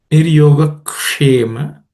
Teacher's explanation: the ksha is a cerebral ksha, so the tongue should point, the tip of the tongue should point upwards.